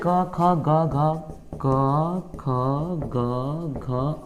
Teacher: क ख ग घ और अंग ये सभी का उच्चारण कंठ से होता है